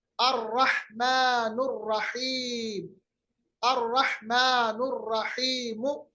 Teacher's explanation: اور دیکھیں الرحمن الرحیم، الرحمن الرحیم، اب دیکھیں الرحمن لکھا ہوا ہے، الرحیم لکھا ہوا ہے مگر ہم نے لام نہیں پڑھا کیونکہ را جو ہے یہ حرف شمسی ہے۔ اب آپ یہ بھی بتا سکتے ہیں کہ شاید یہ وجہ ہو کہ یہاں پر تشدید بنی ہے۔